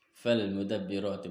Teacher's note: Fal mudabbirati, maka terjadilah alif lam qamariyah. Ketika dibacanya huruf lamnya tampak dan di atasnya ada tanda sukun.